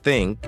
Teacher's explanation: meaning your vocal cords don't vibrate you place your tongue between your teeth and blow air out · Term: unvoiced